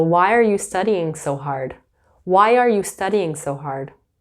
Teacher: Often you'll hear that why are will turn into wire.